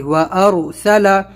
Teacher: رائے ساکنہ اس سے پہلے زبر ہے تو ہم یہاں پر اس کو پر کریں گے، موٹا کریں گے ، وارسل، یہاں پر تشدید ہے واو کے اوپر کیونکہ یہاں